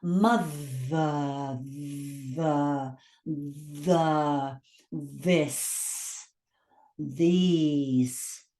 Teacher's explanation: If you put your hand on your throat, you can feel a vibration there because it's a sounded consonant.